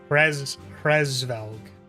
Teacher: There shouldn't be any vowel sounds between the H, R, as far as I'm concerned, or a very muted one.